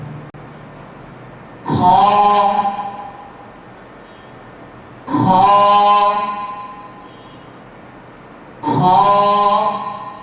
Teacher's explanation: হলকের শেষ ভাগ থেকে, উপরের অংশ থেকে, মানে গলার উপরের অংশ থেকে, কণ্ঠনালীর উপরের অংশ থেকে এই হরফটি উচ্চারণ করা হবে। আমি উচ্চারণ করছি, আপনারা সবাই লক্ষ্য করুন এবং আওয়াজগত, উচ্চারণগত এটা মোটা হবে।